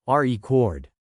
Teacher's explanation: As a noun, the stress is on the first syllable.